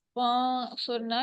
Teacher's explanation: نون ساکن ہے، اخفا ہوگا، یعنی آواز کو ہم چھپائیں گے، آگے حروف ہلکی نہیں ہے.